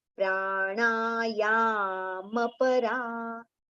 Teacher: Over here it is not pranayam, Ma is complete. So ya we have to prolong so that ma can be recited with a complete sound, and then immediately next letter pa we can take easily.